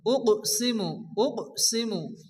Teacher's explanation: কফ সাকিন, কফ যেহেতু কলকলার অক্ষর হালকা ধাক্কা দিয়ে পড়তে হবে